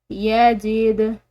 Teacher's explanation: यजीद दाल हरूफ कलकला में से हिलाकर छोड़ेंगे